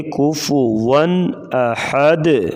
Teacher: تنوین کے بعد حروف حلقی حمزہ آ گیا ہے، تو لہذا یہاں پر غنہ نہیں ہوگا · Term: اظہار